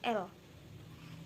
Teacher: Yang keempat, lateral atau sampingan keluarnya udara dari sisi lidah